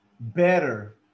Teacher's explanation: Cuando ustedes tienen una palabra con dos T's, with two T's, cuando miren una palabra con dos T's, te da una D, como de David, una D.